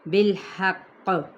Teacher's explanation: یہاں پہ دباؤ کے ساتھ وقف کرنا ہے، یعنی اس پہ قلقلہ کیا جائے گا جب ہم اس کو وقف کریں گے، یعنی سٹاپ کرتے ہوئے.